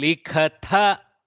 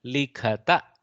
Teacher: Only change is now Mahaprana switches to Alpaprana.